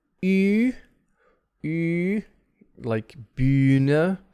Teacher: it's like e with the lips around it